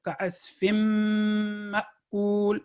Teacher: تو یہ 2 سیکنڈ کی نیزل ساؤنڈ اس لیے آ رہی ہے کہ میم کے ساتھ، مشدد میم کے ساتھ مل رہا ہے